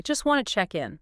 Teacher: The source points out that in this particular utterance, the speaker doesn't pronounce the t sound in either word. Not in just and not in wanted. Both of them. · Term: consonant reduction